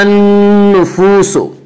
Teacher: الف اور لام کو نہ پڑھیں گے بلکہ بعد والے حرف سے ملا کر پڑھیں گے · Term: حروف شمسی